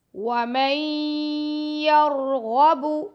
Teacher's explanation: میم کو ہم نے یا سے ملانا ہے، نون کو نہیں پڑھنا، ٹھیک ہے، کیونکہ نون ساکن کے بعد یا آ رہا ہے. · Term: ادغام مع الغنہ